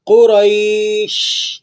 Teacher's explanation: شین کے اندر سے آپ کو پتہ ہے سیٹی کی سی آواز نکلتی ہے، حروف صفیریہ میں سے ہے